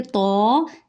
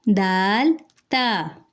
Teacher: تو کو ہم موٹا کر کے پڑھیں گے، لیکن دال اور تا باریک پڑھا جائے گا